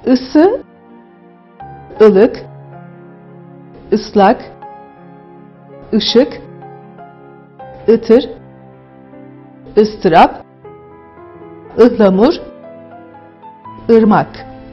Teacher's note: I ünlüsü düz, dar, art ünlü olarak adlandırılır. Çıkış noktasına baktığımızda damağın arka bölümünden çıkan bir sestir. Yine i sesinde olduğu gibi burada da dudakların yanları kulaklara doğru açılır.